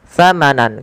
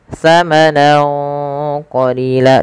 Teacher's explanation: samarkan suara nunnya kepada huruf qaf awalnya samanan, karena bertemu qaf samanan qalila, dan ditahan dengungannya sepanjang 2 harokat. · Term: ikhfa